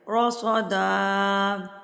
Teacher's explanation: صاد حروف مستعلیہ میں سے، موٹے حروف میں سے، تو صاد بھی پر پڑھا جائے گا